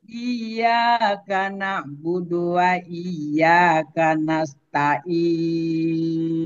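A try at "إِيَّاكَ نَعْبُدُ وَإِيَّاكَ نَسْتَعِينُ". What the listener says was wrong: Nah, lebih tinggi lagi. Iyyaka na'budu wa iyyaka nasta'in.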